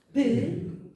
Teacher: a boca fecha-se para pronunciar isto. Há uma oclusão do ar, mas uma é bilabial, p, a outra é dental, toca-se com a linha nos dentes. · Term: consoantes oclusivas